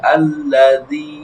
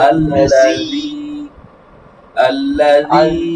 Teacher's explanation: জিহ্বার আগা দিয়ে, الذي তারপর তালুর সাথে লাগবে